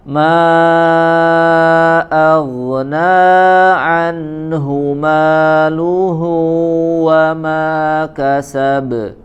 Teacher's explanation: Ma aghna, naknya 2 harokat saja ya, 2 harokat, maknya yang dia dibaca 4 atau sampai 5 harokat. Ma aghna an langsung 2 harokat pendek saja.